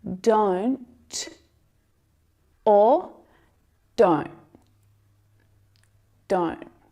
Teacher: fully aspirated with that release of air to make the sound the stop T stops it short before the air is released it's like you catch the sound